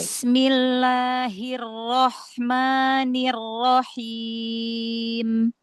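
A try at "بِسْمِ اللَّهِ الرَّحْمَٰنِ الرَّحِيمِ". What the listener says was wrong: Hati-hati, ha jangan masuk ke roh.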